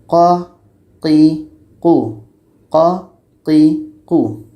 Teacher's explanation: dekat pangkal lidah kita itu qo kita rasakan lidah kita terangkat